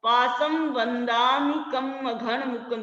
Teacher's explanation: जहां जहां अनुस्वार है वहां वहां उसकी 2 मात्राएं हो गई हैं।